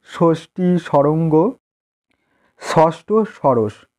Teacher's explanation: জিহ্বার অগ্রভাগ তালুর মাঝখানে উঠে আঘাত করে। উদাহরণ ষষ্ঠী, সরঙ্গ, ষষ্ঠ, সরস।